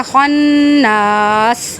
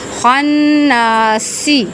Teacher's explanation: وقف کی حالت میں جو سین متحرک ہے یہ ساکن ہو جائے گا